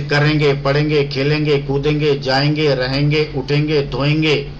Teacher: है कहानी किसी भी शब्द में अगर गैस से पहले आपको अनुनासिक ध्वनि या अनुस्वार का उच्चारण होता है यानी वो ध्वनि जिसका नाक से उच्चारण होता है